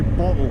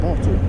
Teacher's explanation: the glottal stop where you don't pronounce your T's